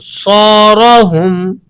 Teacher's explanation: سو را پر زبر ہے تو اسے آپ نے زبر ہونے کی وجہ سے موٹا کر کے پڑھنا ہے۔